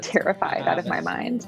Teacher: Americans change the sound of T when it comes between two vowel sounds. The T becomes a soft D